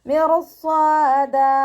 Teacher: റോ കൽക്കലയുടെ letter ഇല്ലാത്തത് കൊണ്ട് half സുക്കൂന് കൊടുക്കുക. സ്വാദ് ഇസ്തിഅലാൻ്റെ ലെറ്ററാണ്. തഫീം ചെയ്യുക. ഇത്ബാക്കിൻ്റെ ലെറ്ററും കൂടിയാണ്. അപ്പോൾ നാവിൻ്റെ ബാക്ക് കൂടുതലായിട്ട് മുകളിലേക്ക് ഉയർത്തിയിട്ട് വേണം ഉച്ചരിക്കാൻ. ഫതഹ തൻവീനിൽ വഖഫ് ചെയ്യുമ്പോൾ 2 കൗണ്ട് നീട്ടി വഖഫ് ചെയ്യും.